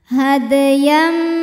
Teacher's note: ada huruf qqah yang sukunnya asli dan ada di tengah bacaan cara bacanya dipantulkan dalnya dengan pantulan yang kecil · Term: qqalah